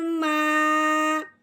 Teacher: میم کو ہم نے الف کے ساتھ ملایا اور ایک الف کے برابر لمبا کر دیا